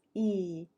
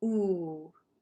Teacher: So we say there's front vowels, E, and back vowels, ooh. We have high vowels where our tongue is high in our mouth, E. · some vowels, our tongue goes more forward, like E. And some of our vowels, the tongue will go back, like ol or oo, ooh.